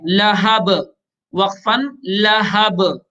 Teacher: اس کے بعد لام زبر لا، ہا زبر ہا، لہا، با دو زیر بن، لہبن، وقفن لہب. با کو ساکن کر لیں گے اور چونکہ با حروف قلقلہ میں سے ہے لہذا با میں قلقلہ بھی کریں گے.